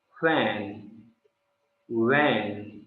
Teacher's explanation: इन्हें कॉन्टिन्यूएंट्स इसलिए बोला जाता है क्योंकि इन्हें बोलते समय हमारे होठ ओपन रहते हैं और हवा का पूरा फ्लो होता रहता है। जैसे फैन, वैन, तो ये वैन, तो हमारा मुंह पूरा खुला हुआ है और इसमें से पूरी वॉइस बाहर आ रही है और कॉन्टिन्यूएंट आ रही है।